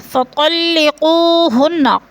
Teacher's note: हुन्ना की नून मुशद्दद है, सख्ती से जमा कर पढ़ेंगे